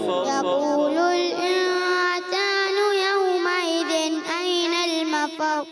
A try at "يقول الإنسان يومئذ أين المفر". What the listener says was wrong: يقول الإنسان سیٹی کے ساتھ, سین سیٹی کے ساتھ دوبارہ.